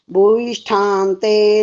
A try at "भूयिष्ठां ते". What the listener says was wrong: 2 गलतियां फिर हो गई हैं। भूयिष्ठांत में भ में बड़ा हुआ है, और यहाँ पर राण मेनो जो बोला आपने ठीक बोल दिया, ण का आवाज ठीक आई है।